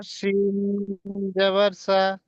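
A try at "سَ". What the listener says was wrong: জি, শিন বলবেন না, জি মধ্যখানে টান দেবেন।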